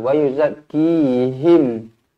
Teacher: Mim yang bertanda mati, izharu syafawi, dibaca jelas dan terang. Matikan betul-betul.